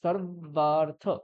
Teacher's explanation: তাহলে রকারের পরে এখানে সর্ব এরকম আছে, তাহলে রকারের পরে যে বকারটা থাকবে সেই বকারটা দ্বিত্ব হবে, মানে কি এর আগেও একটা বকার হয়ে যাবে।